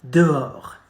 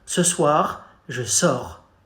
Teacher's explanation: it goes like something is stuck in your throat. It's very guttural, okay? We call it the guttural R, like something is stuck and you try to spit it out.